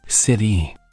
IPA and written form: ˈsɪɾi (city)